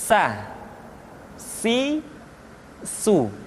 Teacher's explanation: ujung lidah di antara dua gigi seri kita.